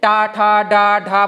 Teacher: जो ढलान वाली जगह होती है, दांतों के पीछे दूर थोड़ा ढलान वाली जगह होती है, उसको कहते हैं मूर्धा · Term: मूर्धन्य व्यंजन